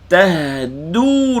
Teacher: Anta, ta tu baru tekan makhraj ta. Tahduha sukun, panjangkan sedikit bunyi ha